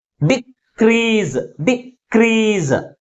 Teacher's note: Second syllable is pronounced with a greater force comparing with first syllable. That is crease. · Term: primary stress